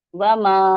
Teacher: پھر وما، وما کو میم پہ الف، الف مدہ ہے یہ، تو 2 کاؤنٹس پڑھیں گے اس کو، وما۔